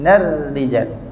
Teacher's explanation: Ra nipis masa kita sebut nar tadi tu, lidah kita ke depan sedikit dan senyum.